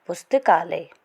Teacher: इसी प्रकार पुस्तक जमा आलय। पुस्तक का अंतिम स्वर अ और आलय शब्द का प्रथम शब्द आ से आ दीर्घ स्वर का विकार उत्पन्न होता है, जिस कारण पुस्तक जमा आलय का नया शब्द बनेगा पुस्तकालय। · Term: दीर्घ स्वर आ